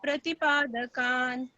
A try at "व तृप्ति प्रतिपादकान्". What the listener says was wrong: ये जो व तृप्ति, यहाँ पर ऊ का उच्चारण नहीं आना चाहिए, री व तृप्ति, व तृप्ति प्रतिपादकान।